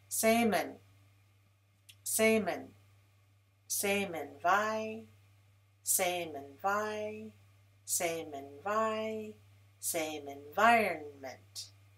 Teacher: Link the m to m, men.